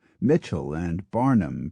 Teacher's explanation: Mitchell and Barnum for instance were left with the stress on the first syllable